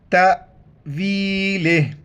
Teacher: تو وقف کریں گے، آخر میں صرف ہا کا ساؤنڈ آئے گا ، تأویلہ، تا الف زبر تا، جھٹکے کے ساتھ پڑھنا ہے،